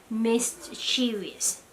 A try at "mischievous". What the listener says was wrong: Mischievous. No, there's no T. It's mischievous. Yeah, it's all one word about mischievous.